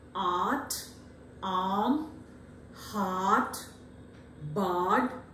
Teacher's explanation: Mind you, right from the, as we travel from the first vowel to the fifth one, the jaws are now wide open, which was earlier almost closed when we started with the first one. So A is open, more closer to back, and at the same time it is again unrounded but spread vowel.